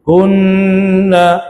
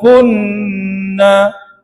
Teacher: Kalau tuan-tuan langgar je nun bersabdu ni kan, tak dengung dia, artinya tuan-tuan fail pada hukum yang paling asas. Nun dengan mim bersabdu, jaga, mesti dengungkan dia.